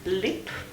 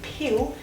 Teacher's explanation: the phoneme L is realized as a clear L, as in lip, or as a dark L, as in pill